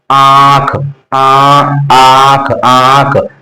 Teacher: पहले मुख से आवाज आ रही, फिर उसके बाद नाक बज रहा है। तो पहले चंद्रबिंदु में पहले मुख से क्या हो उच्चारण होता है, उसके बाद नाक से होता है।